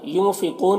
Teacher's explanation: ینفقون کے نون میں اخفا ہوگا، نون کی آواز کو ناک میں چھپا کر پڑھیں گے۔ قاف یہاں پر حروف مستعلیہ میں سے پر پڑھیں گے، اور واو مدہ ہے، ایک الف کے برابر کھینچیں گے۔